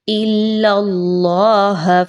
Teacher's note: اللہ کے حرف سے پہلے لام کے اوپر جو کہ زبر ہے، آپ نے اللہ کے حرف کو پر پڑھنا ہے